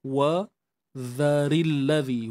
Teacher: huruf dhal keluarkan sedikit hujung lidah